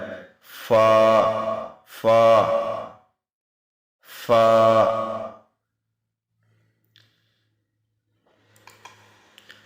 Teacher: Fa comes out when the edge of the top front teeth touches the inside of the bottom lip.